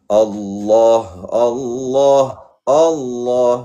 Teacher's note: Ha di pangkal kerongkong. Ha Allah.